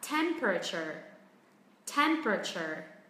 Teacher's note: Trọng âm rơi âm tiết thứ nhất, dù là có 3 âm tiết hay là 4 âm tiết đi chăng nữa thì vẫn cứ là temperature.